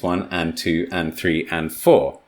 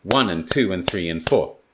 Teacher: i'm eating the words between the numbers i am not giving them the same amount of time